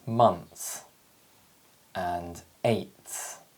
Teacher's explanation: the air is blocked between the tongue and the teeth making the following sound easier to produce because all we have to do is release the tongue slightly